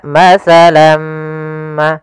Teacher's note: tanwinnya masuk kepada huruf mim tinggallah bunyi suara huruf mim